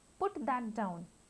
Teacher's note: Rising intonation. In this, the pitch of the voice rises over time.